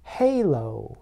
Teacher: Overall, when you make the h sound, your vocal cords are tense and restricted, but they do not move. The back of your tongue should be pushed back a little to create friction as the air flows out from the back of your mouth.